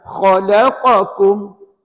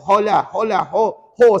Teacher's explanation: Kha itu adalah sebutan di atas kerongkong.